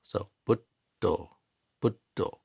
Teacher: We don't say but, we say but. So the D is closing off the air, restricting the air, and stopping sound from coming out. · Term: double consonants